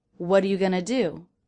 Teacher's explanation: Notice I'm also reducing going to gonna.